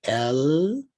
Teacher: where the tongue rises to the top palette to say l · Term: liquids